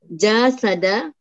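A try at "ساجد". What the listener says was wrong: Kebalik hurufnya. seringkali itu huruf-hurufnya pindah tempat. Yang pertama jadi kedua, yang kedua jadi pertama. Nah, harus ingat hurufnya apa saja.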